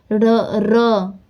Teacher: र र कंपन हुआ ना जीभ में